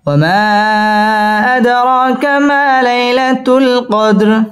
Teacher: ওয়া ঠোঁট গোল করে উচ্চারণ করতে হবে। ওয়া মা মধ্যে মুনফসিল 3 আলিফ টেনে পড়তে হবে।